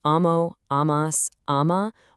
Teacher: The stem am stays totally anchored, while the endings carry that really heavy a sound.